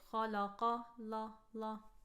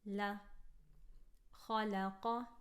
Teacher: Here we have a lam that's light in the middle of 2 heavy letters. So we want to keep the heavy letters heavy and the light letter light.